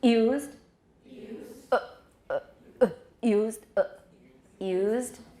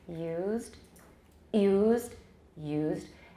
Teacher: try it without the glottal stop, just the glide, nice and smooth